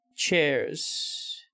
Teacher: voicing we use the voiceless equivalent which is an s so the z sounds at the end of words turn into more of an s sound you can hear this voicing in the plural form or chair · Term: voicing of word final z, devoicing of word final Z